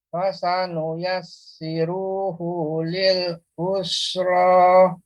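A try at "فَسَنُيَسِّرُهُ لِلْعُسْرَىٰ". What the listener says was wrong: Ru-nya masih malah bertambah panjang Pak ya, ru-nya. Fasanu yassiruhu lil usra. Ya, nanti terus dilatih Pak ya untuk huruf sin ya. Jadi bukan usra ya, atau usra juga bukan. Dia lebih dibuka ya, lebih kayak seperti meringis, serangnya dibawahkan us ya. fasanuyassiruhu lil usra.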